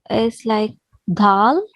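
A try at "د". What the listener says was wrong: No, don't blow the air. It's dal. You're saying T-H-E, the. So try to say the. The. So this is the sound of dal. The.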